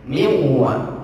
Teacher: Cuman karena ini di sini nunnya dihukumi dari idgham, akhirnya dimasukkan dan dua huruf ini menjadi satu huruf yang bertasydid, dan itu mengikuti huruf yang kedua, waw jadinya